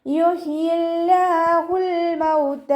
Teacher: അതുകൊണ്ട് നമ്മൾ അവ്വ എന്നുള്ള നാമത്തിലെ ലാമിനെ താഴ്ത്തി ഉച്ചരിക്കുക, ലൈറ്റാക്കി ഉച്ചരിക്കുക